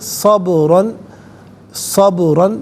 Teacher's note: با ساکن پر آواز لوٹتی بھی محسوس ہوگی۔ را پر دو زبر کی تنوین ہے، اسے پر کر کے پڑھا جائے گا، اور یہاں وقف کریں گے تو دو زبر کی تنوین الف سے چینج ہوگی، تو اس وقت بھی اسے پر کر کے ہی پڑھا جائے گا۔ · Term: حرف قلقلہ